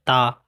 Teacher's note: चा तालव्य, टा मूर्धन्य, ता दंत कहलाता है, पा ओष्ठ कहलाता है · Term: उच्चारण स्थान